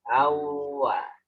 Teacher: Tanwin dengan wawu juga ditahan. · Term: idgham bi gunnah